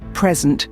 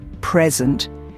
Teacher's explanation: When the stress is on the first syllable, present, it's a noun